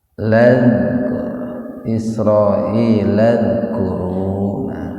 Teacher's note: Jadi dibacanya jangan dal, jangan Isra'ilad, jangan dipantulkan, tapi za ujung lidahnya digigit.